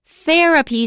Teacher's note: Therapy, stress is on the first syllable.